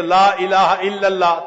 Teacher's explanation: پھر یہ بھی سن لیجئے کہ لفظ اللہ سے پہلے اگر کوئی لفظ ہے اور وہ مفتوح ہے یا مضموم ہے تو اللہ کا جو لام ہوتا ہے نا اس کو پر پڑھتے ہیں، اس کو تفخیم کہتے ہیں قراء کی زبان میں